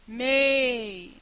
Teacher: esse i se prolonga mais do que o normal, mas não se prolonga mais do que o e. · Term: semivogal